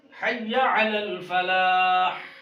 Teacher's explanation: ہا پر وقف کریں، گلے کو دبا کر ہا کی آواز باہر نکلنی چاہیے، سنانے والے کے کان تک ہا کی آواز پہنچنی چاہیے، تب اصلاح ہوگی.